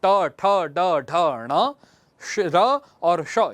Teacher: इनका उच्चारण स्थान हम मूर्धा से करते हैं